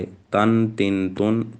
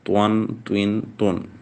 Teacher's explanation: इन दोनों में फ़र्क है, ता बारीक पढ़ा जाएगा, त्वा मोटा पढ़ा जाएगा।